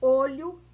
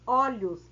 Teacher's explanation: olho fechado no singular olhos aberto no plural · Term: plural metafonico